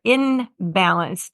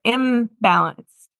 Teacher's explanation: they're imbalance and so that's an accommodation that we make because the B is made with the two lips together and so is the m made that way so it's very quick to say imbalance instead of inbalance where